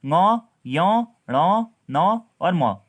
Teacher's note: अनुनासिक स्वरों ङ, यो, ण, न, म के उच्चारण में वायु या ध्वनि मुख के साथ साथ नाक से भी निकलती है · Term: अनुनासिक वर्ण